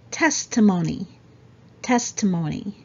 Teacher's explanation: so there's a stress on the first syllable